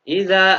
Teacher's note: Idza ada zal berharokat fathah diikuti alif, namanya bacaan matobi'i. Dibaca panjang, panjang bacaannya 1 alif, 2 harokat.